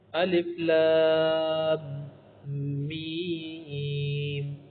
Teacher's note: طرح شروع کر لیتے ہیں نا، تدغم المیم الاولی فی الثانیہ، یہ پہلی والی جو میم ہے دوسری میں آپ مدغم کریں گے نا، ادغام بغنۃ، ادغام غنہ ہوگا کیونکہ میم میں تو ادغام غنہ ہوتا ہے، ویصبح یا ویصبح